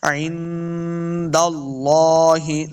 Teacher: نون ساکن کے بعد آگے دال حروف اخفا سے تو غنہ یعنی اخفا کرنا ہے